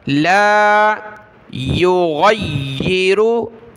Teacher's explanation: इन्नल्लाह ला युग़य्यिरु, गैन को या के साथ मिलाएंगे, या के ऊपर तशदीद है तो या को हमने सख्ती के साथ पढ़ना है